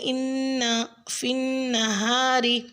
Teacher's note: لفظ انا اور فنہا میں نون مشدد پر غنہ کریں